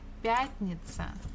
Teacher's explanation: Stress falls on я.